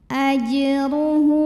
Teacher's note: Hu mad silah qasirah karena ada hak dhamir yang diapit 2 huruf hidup, huruf setelahnya selain hamzah ya, bukan a, bukan i, bukan u. Maka hak dhamirnya ini dipanjangkan 2 harokat.